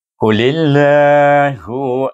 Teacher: Terus lam diidgham samsikan pada lam jalalah dan baca dengan nipis kerana baris ya.